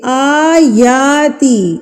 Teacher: جب کھڑی زبر آ جاتی ہے تو انڈرسٹوڈلی ہم نے اس کو ایک حرکت کے برابر کھینچ کے پڑھنا ہے ، اس کو ہم ایک حرکت کے برابر کھینچیں گے، آیاتی،